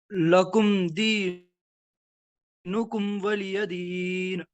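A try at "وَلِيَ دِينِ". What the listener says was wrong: वलिय दीन नहीं, वली, लाम के नीचे जेर है, वलिय दीन।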